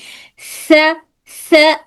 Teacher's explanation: जी सा बोल कर देखिए कि जुबान सामने के ऊपर के दांतों के बीच आई है या नहीं। दांतों के बीच मतलब ऊपर के दांतों के किनारे को टच कर कर दोनों दांतों को नहीं टच होना बल्कि दोनों दांतों के बीच में रहना है। स इस तरह से अगर आवाज उर्दू के सीन जैसी लग रही है तो गलती हो सकती है।